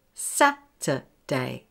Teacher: Here, the schwa is replacing the er sound when it's spelt with U-R. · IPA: /ˈsæ-tə-deɪ/